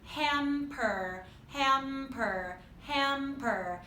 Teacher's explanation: make sure you're making a long M, that you're really getting a buzz in your M while you say the word. Hamper, hamper, and a really clear P, okay?